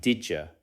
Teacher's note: We already saw this with did you, which may sound like did you. The D sound and Y sound combine into a J sound.